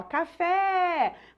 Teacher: Qual que é a sílaba que se estendeu a sílaba fé então é a última sílaba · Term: sílaba tônica